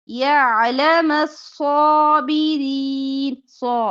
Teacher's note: صاد موٹا صابرین باقی حرف باریک